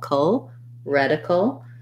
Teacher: And then we have a dark L here. So we're going to go almost right from the K to the L